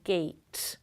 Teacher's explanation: for the tense vowel we tend to move the tongue up at the end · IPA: [geɪt]